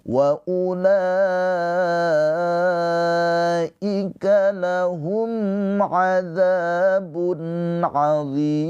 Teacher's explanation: Karena ada mad thabi'i bertemu dengan huruf yang disukunkan yaitu mim. Mimnya ini disukunkan karena berhenti ya ujung ayat. Maka d ini dipanjangkan boleh dua harakat, empat harakat atau enam harakat. Mad arid lisukun.